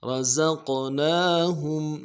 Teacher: سیٹی والا حرف ہے، زا سیٹی نہیں گری، را موٹا، رزق، قاف کے اوپر قلقلہ ہے، قلقلہ کرنا ہے ، رزقناہم، نون کے اوپر کھڑا زبر ہے کھینچنا ہے، وَمِمَّا